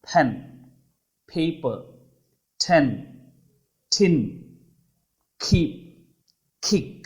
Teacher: ప్లాజివ్, ఒక విస్ఫోటనం జరిగినట్లు శబ్దం బయటకు వస్తుంది. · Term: ప్లాజివ్స్